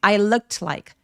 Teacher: 중간에 T를 날려버리고 발음을 안 해서